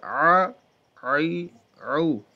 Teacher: درمیان حلق کے اس کا مخرج ہے